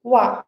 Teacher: Nesse caso, a gente pronuncia wa. Então, o, ele vai ficar um O bem relaxado, não tão arredondado, né? Não vai ficar OA, ficar um pouco mais entre um O e um U, né? Uma semivogal ali. E o I, ele vai fazer um A, uá.